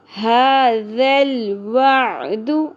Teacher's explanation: ذال زبر لام ذل، ھذا الوعد، ھذا الوعد، اور یہاں آپ دیکھیے ذال، ذال کو نرمی سے ادا کرنا ہے، ذال میں سیٹی اور شدت نہیں ہونی چاہیے